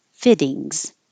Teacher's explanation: The vowel is I, like it, and the T's change to D.